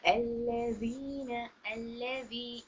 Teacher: अल्लज़ीना, अल्लज़ी, यहाँ पर मद असली का फ़ायदा हो रहा है, यानी हर्फ मद का फ़ायदा हो रहा है। या साकिन से पहले कसरा 2 काउंट्स करेंगे, यहाँ पर या मद का फ़ायदा हो रहा है।